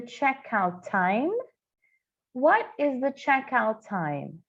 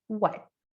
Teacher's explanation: aqui eu vou chamar atenção para esse T no final de what que eu não ouço.